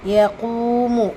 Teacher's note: காஃப்ல வந்து வாவ் மதா இரண்டு ஹரக்கத் அளவு நீட்டம் கொடுங்க